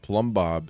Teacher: The thing that's interesting about plumb bob is that the first B is silent. The B in plum is silent.